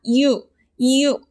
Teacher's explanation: 이중모음을 보면 유를 보겠습니다. 유를 보면 반모음 이를 거쳐서 우로 발음된다고 했습니다.